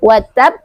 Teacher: Cara membacanya tekan dulu, berikan dulu tasdidnya baru lanjut ke qalqalahnya